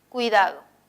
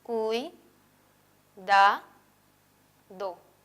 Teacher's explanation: Las dos vocales cerradas son la U y la I y permanecen juntas en la misma sílaba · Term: diptongo